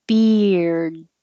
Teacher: You finish in the D position, so your tongue is stopping the airflow. It's the same until beer, and then you add the D, beard.